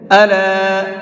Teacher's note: یہاں پر یہ چھوٹا مد ہے تو اس کو 1 سے 3 الف کی برابر کھینچ کر کے پڑھیں گے